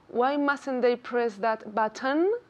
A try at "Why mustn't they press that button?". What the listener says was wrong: Okay, that button. That button. Es que no sale tu lengua.